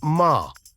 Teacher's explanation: the tone two is a rising tone which starts mid and Rises to high